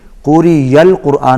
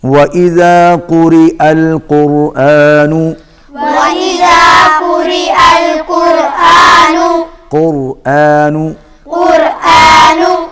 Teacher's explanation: بسم الله الرحمن الرحيم، وَإِذَا قُرِئَ الْقُرْآنُ، وإذا قرئ القرآن، واو پر ہونٹ گول ہوں گے، قاف موٹا پڑا جائے گا، را باریک ہوگی کیونکہ را کے نیچے زیر ہے، اور آپ دیکھ رہے ہیں کہ یا کے اوپر حمزہ ہے، یہاں پر یا نہیں پڑھی جائے گی، قوری یل قرآن نہیں ہوگا بلکہ قوری القرآن ہوگا، حمزہ پڑھا جائے گا